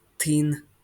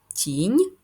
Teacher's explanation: тінь починається зі звука ть на письмі це одна літера Т але звук у нас Т твердий і ть м'який тин перший звук т він приголосний твердий позначаємо однією рисочкою тин